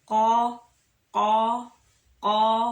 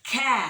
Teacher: huruf ko itu tidak ada nafas keluar, sama k itu ada nafas keluar